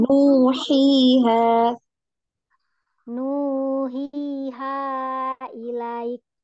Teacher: kemudian nuhiha ini panjang ya, dua harokat ya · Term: bacaan mat